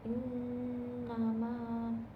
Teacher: cara membacanya itu dengan didengungkan dan ditahan pada tiga harakat · Selanjutnya itu terdapat gunah karena ada nun bertanda tasydid, itu cara membacanya itu dengan didengungkan dan ditahan pada 3 harokat, yaitu pada nun bertasydid innama.